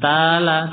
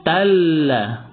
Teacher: Jangan tala, tapi talla masukkan karena dia berbaris tasydid